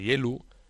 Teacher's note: rasgos asturleoneses, como el cierre de las vocales finales